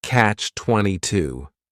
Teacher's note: The word catch is just one syllable and then 22 is three syllables and the stress is on that final syllable